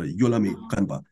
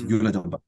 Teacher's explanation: in these languages, the stress is always on the first syllable of the word